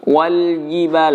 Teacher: benar-benar dari dalam rongga mulut dari pertengahan lidah yang kemudian ditempelkan ke langit-langit mulut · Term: huruf jim